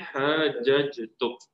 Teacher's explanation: dia akan jadi qalqalah sughralah kecil. So kita akan baca hajjaj. Seolah-olah jim tu berbaris atas.